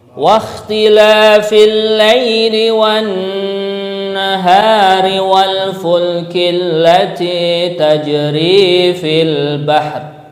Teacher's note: pengucapan kha yang sukun ya, wah ada sedikit kayak orang ngorok nih nggih